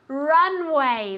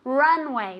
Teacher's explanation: Runway with the accent on the first syllable.